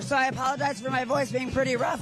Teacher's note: I mean she has literal vocal fry